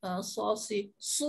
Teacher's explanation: Bila kita sebut su, pangkal lidah terangkat. Si, pangkal lidah terangkat.